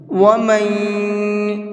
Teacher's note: ومن يتعد، یہاں پر نون ساکن کے بعد میں یا ہے، اور نون ساکن کے بعد میں یا ہوتا ہے تو وہاں پر بھی غنہ کر کے پڑھتے ہیں۔ ومن، اس طرح سے جو ہے ناک میں آواز نکل رہی ہے، یہی غنہ کہلاتا ہے